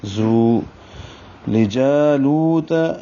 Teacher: جا کو بھی 2 حرکات لمبا کریں گے، اور لو کو بھی، جا الف مدہ ہے، لو واو مدہ ہے